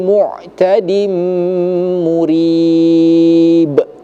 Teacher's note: Tanwin bertemu dengan huruf mim. Maka hukum bacanya idgham bighunah. Ya, artinya kita harus harus didengungkan.